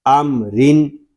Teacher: یہاں میم ساکن ہے، اس کو بلا غنہ پڑھیں گے یعنی اس میں غنہ نہیں کریں گے